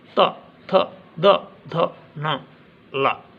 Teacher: इन वर्णों को जब हम बोलते हैं, यदि हम उच्चारण सही करेंगे तो हमारी जिह्वा दांत को आकर स्पर्श करती है, इसलिए इन्हें दंते व्यंजन कहते हैं।